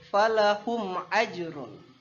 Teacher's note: Izhar syafawi jadi mimnya tidak boleh berdengung